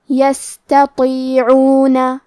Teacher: یہاں حرف تا ہے اور اس کے بعد تو ہے، تا حروف ترقیق میں سے ہے تو ہم تا کو پتلی آواز میں پڑھیں گے، اور تو حروف تفخیم میں سے ہے تو ہمیں حرف تو کو بھاری آواز میں پڑھنا ہے